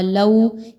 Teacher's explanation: وَلَوْ شَاءَ اللَّهُ لَو لام زبر وا لو، یہاں پر دیکھیں تو واو پر جزم کا نشان ہے اور اس سے پہلے والے حرف پر زبر آ رہا ہے. 2 حرکات کے برابر واولین کی حرکت کو رکھیں گے